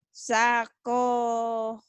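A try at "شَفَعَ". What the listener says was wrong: Bukan sakoa. Titiknya satu. Syafa'a. Syafa'a. Bukan sakoa.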